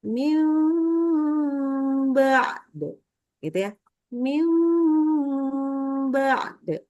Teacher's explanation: Jadi hati-hati nunnya, bunyi nunnya hilang nih. Langsung berubah menjadi huruf mim.